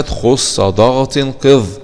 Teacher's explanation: وتفخم الخاء لانها من حروف التفخيم المجموعه في جمله خص ضغط قظ